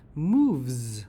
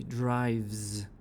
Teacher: e e is silent the V is the last sound move so we pronounce the S as a Z